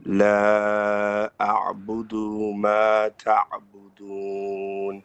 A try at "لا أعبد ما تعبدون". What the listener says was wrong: Okay, the first da, la a'budu. It's a short vowel. A'budu, and you stop it.